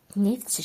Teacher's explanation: Çini, samitlə başlayan şəkilçi. Deməli, ikinci kar düşməlidir. T düşməlidir.